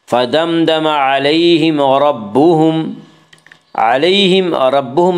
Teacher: فدمدم علیہم ربہم میں اظہار شفوی ہوگا، اس کا قاعدہ ہے کہ میم ساکن کے بعد میم اور با کے علاوہ کوئی اور حرف آئے تو وہاں پہ اظہار شفوی ہوگا، یعنی میم کو ظاہر کر کے پڑھیں گے۔